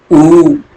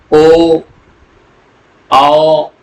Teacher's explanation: वृत्त मुखी में क्या है कि होठ का आकार गोलाकार होता है। बोलते समय यह गोलाकार होता है।